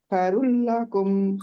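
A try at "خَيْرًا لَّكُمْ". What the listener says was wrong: خی خی خے نہیں ہے، خی. خیر لکم نہیں ہے، خیر لکم ہے. خی، خی رلا. خیر لکم.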